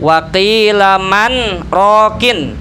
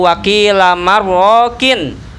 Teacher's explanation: Dibacanya waqilaman man, berhenti tanpa bernapas sebentar, kemudian roko. Harusnya kan idgham nun matik bertemu ro. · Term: saktah